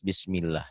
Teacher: Kalau sebelum lafaz Allah berbaris di bawah, tipis.